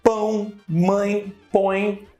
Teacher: se eu tiver influência do septo nasal, eu vou ter um ditongo nasal